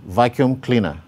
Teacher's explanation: you can see the primary stress on vacuum and the secondary stress on cleaner